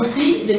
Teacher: phrase, et donc le mot pluie, dont les constituants phoniques sont le groupe consonantique formé d'une occlusive P et d'une liquide L, suivi du glide oui